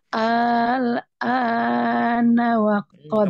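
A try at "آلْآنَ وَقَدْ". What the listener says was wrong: Kepanjangan. Yang ini berapa harakat? Nah, yang ininya 2 harakat saja. Al-ana wa qad.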